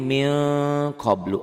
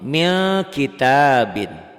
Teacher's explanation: Ini yang abad jauh, bunyi n-nya jadi eng. Min qablu jadi mil qablu, engnya banget. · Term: ikhfa